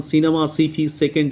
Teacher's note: কিছু ইংরেজি শব্দ আছে যেমন সিনেমা সিফি সেকেন্ড এগুলো দেখবে সব দন্তেস্য হবে এগুলো কোনটাই তালবস্য হবে না